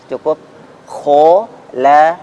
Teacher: tidak usah perlebihan kho, ko, tanpa memajukan kedua bibir.